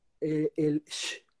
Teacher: introduce la sílaba fricativa SH, el sh, que suena como una sartén friéndose algo